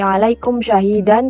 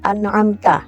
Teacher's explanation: diperjelas bunyi mim matinya secara terang di bibir tanpa dengung